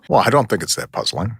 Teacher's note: It's the pauses that most shape his deliberate rhythm.